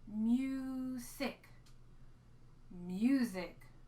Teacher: sammy snake was kind of sleeping on the job and he's making that z sound here